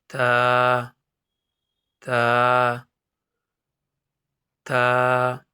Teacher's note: تا جو ہے وہ سامنے والی دانت کی جڑ یعنی زبان کی نوک سامنے والے دو دانت کی جڑ میں لگے تا ادا ہوتا ہے